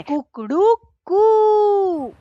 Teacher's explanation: इसलिए शास्त्रों में लिखा कि ऊ काल ह्रस्व दीर्घ प्लुतः, मुर्गे की बाग का जो ऊ काल है, माने 3 बार जो वो ऊ बोल रहा है। तो देखिए पहला जो है वो ऊ है ना, वो ह्रस्व है। दूसरा जो है ऊ वो दीर्घ है। और तीसरा जो कू बोल रहा है उसमें प्लुत ऊ लगा हुआ है